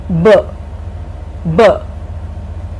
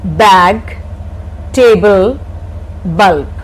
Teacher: Both the lips touch each other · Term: sound B